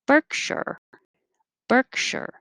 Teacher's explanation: in america the unstressed syllable the shure shire changes to sure